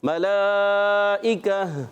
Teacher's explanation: لام پر کھڑا زبر ہے اور کھڑی حرکات کے بعد حمزہ اسی کلمے میں آ رہا ہے، تو اس لیے مد متصل ہو جائے گی